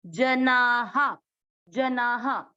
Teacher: ते के बाद अवग्रह, ते हो रात्र, ते को खींचना है, ते हो रात्र, रात्र, विदो जना, ज है ये, ज में मिक्स करेंगे, जना, आ की मात्रा है तो विसर्ग को पढ़ेंगे हा